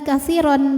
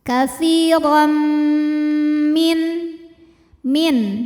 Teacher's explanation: Kemudian ada hukum idgham bi gunnah karena ada tanwin fathah menghadapi huruf mim ya. Maka bukan lagi kathiron bacanya, tapi kathirom bunyi m ya. Dileburkan langsung ke mim lalu ditahan, didengungkan.